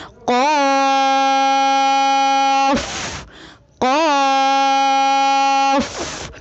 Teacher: قاف کی ادائیگی میں زبان کی جڑ کو کوے کے متصل تالو پر لگا کر موٹی آواز میں پڑھیں